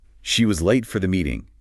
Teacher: Stress on late and the first part of meeting.